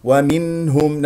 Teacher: نسمع صوت النون المظهره الهاء مضمومه نضم الشفتين فيها ومنهم الهاء من اقصى الحلق باهتزاز